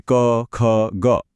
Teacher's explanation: જો આપણે ઉચ્ચારણના સ્થાન પ્રમાણે જોઈએ તો વ્યંજનોને બહુ જ વૈજ્ઞાનિક રીતે અલગ અલગ વર્ગોમાં વહેંચવામાં આવ્યા છે. ગળાના ઊંડાણમાંથી આવતા અવાજો કંઠ્ય કહેવાય છે